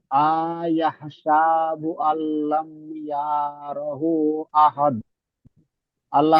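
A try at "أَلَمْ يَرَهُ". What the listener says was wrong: ইয়াটা আপনার টান হয়ে যাচ্ছে। আল্লাম ইয়ারাহু, এইভাবে টান দেবেন।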